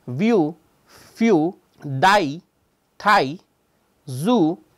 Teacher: especially the word Zoo when you do that you can hear the friction which is happening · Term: fricative